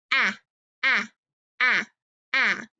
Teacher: Ah is a voiced sound, so it's going to make your vocal cords vibrate.